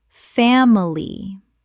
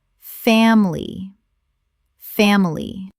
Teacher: 2 syllables in natural speech. The middle I is almost always swallowed.